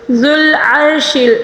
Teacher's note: اور یہاں پر عین کو، یہ بغیر نقطے والا عین ہے، ہم نے اس کو حلق کے درمیانی حصے سے ادا کرنا ہوگا · را کے اوپر ساکن ہے اور اس سے پہلے والے حرف پر زبر ہے، اس لیے را کو پر پڑھیں گے